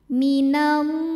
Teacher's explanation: Cara membacanya panjang lamnya 2 harokat saja. Minallahi ma mad tabi'i zahiri karena ada alif yang sebelumnya berbaris fathah, maka huruf mim kita panjangkan 2 harokat.